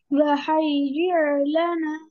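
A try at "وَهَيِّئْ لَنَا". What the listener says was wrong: Yes, just don't make it ayin. Wahayyi lana. Yes, don't make hayir. No, don't take it to ayin sound.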